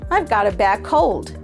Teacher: Here, bad actually sounds like bag in this sentence.